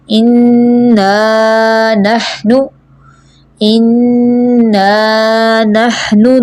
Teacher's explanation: انا پہ نون مشدد ہے نا، تو غنہ ہوگا، یعنی ناک سے آواز آپ نکالیں گی۔ ایک الف کی مقدار رک جائیں